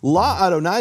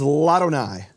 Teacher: And what happens is the vowel drops from the aleph, and the aleph is silent. And in fact, it doesn't have a vowel attached to it to show you that the aleph is silent.